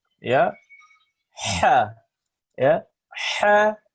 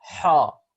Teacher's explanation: posisi lidah lurus, tidak terangkat. Sehingga apa? Suara yang dihasilkan adalah tipis, ya, tidak tebal. Bersamaan dengan sifat yang keempat, al-infitah.